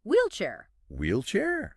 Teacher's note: And the sound at the beginning is important. It's like a puff of air. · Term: wh sound